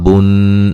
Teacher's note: یہاں بن نون مشدد پہ غنہ ضروری ہے